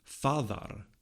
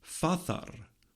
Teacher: On the evidence available to us from the oldest Germanic languages, we'd want to posit in Proto-Germanic the reconstructed form fadar with a voiced fricative in the middle. But Grimm's law tells us that the form should be fathar with a voiceless fricative in the middle, since in other Indo-European languages this consonant is a voiceless plosive.